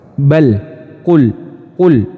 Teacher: huruf lam itu memiliki sifat jahar ya nafas tertahan jadi nafasnya itu tidak mengalir tertahan dia Jadi tidak ada husan nafas yang keluar bal Qul Qul Nah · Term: lam sukun